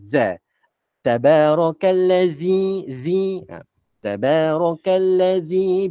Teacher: Zal ni nak sebut Zal lidah ni kena sentuh gigi gigi atas